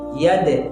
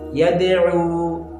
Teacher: اب دال کے مخرج میں جنبش ہو رہی ہے آواز ٹکرا کر دوبارہ واپس آ رہی ہے ٹھیک ہے ید ٹھیک ہے یدعو ٹھیک ہے تو اسی طریقے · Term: قلقلہ